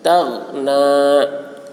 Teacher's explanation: غین کی آواز موٹی ہوگی لیکن یہاں پر قلقلہ نہیں ہوگا